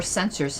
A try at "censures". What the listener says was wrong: Censures. You said censor, but anyway. U-R-E, not O-R, yes.